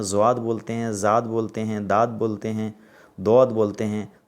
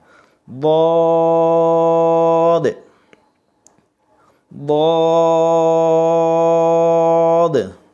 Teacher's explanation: اس کا مخرج یہ ہے کہ زبان کا کنارہ، زبان دیکھ رہے ہیں، اس کا کنارہ، اس کا سائیڈ سے آپ دانت جو اوپر نظر آ رہا ہے، یہ اس کو بولتے چہوا، آپ جانتے ہیں. اس کا سائیڈ میں آپ ٹچ کریں گے، یعنی تھوڑا سا رگڑائے گا، زبان جا کر کے ٹچ ہو جائے گا. رائٹ سائیڈ میں ادا کرنے کا صحیح طریقہ ہے.